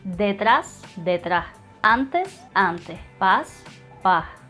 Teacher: Whenever I have to pronounce an S or a Z before a T, a C, a P, or an M, or even at the end of the word, I'm gonna replace that sound with a J sound.